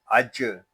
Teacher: اس کو اج اس طرح نہیں پڑھیں گے، اس کو پڑھیں گے اج. جیم جو ہے یہ زبان اور تالو کے درمیان والے حصے سے ادا ہوتا ہے، یعنی زبان اور تالو کے درمیان والا حصہ آپس میں ٹچ ہوں گے تو یہ جیم ادا ہوگا. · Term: کلکلا